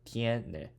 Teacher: Ends with vowel. Stress should fall on the second to last, and it does. Tiene.